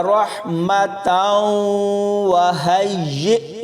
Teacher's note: تا کو واو کے ساتھ ملاتے ہوئے ادغام ہوگا